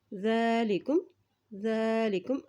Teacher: ذا کے اوپر کھڑی زبر ہے اس لیے اس کو ایک حرکت لمبا ادا کر رہے ہیں ، اور ذال کو ہمیشہ نرمی سے ادا کیا جاتا ہے،